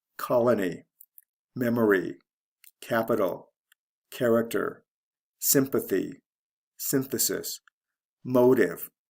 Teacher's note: in most of these words the first syllable is stressed